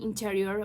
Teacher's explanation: interior where the stress mark is placed on the second syllable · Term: word stress